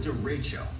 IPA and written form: dəˈreɪtʃoʊ (derecho)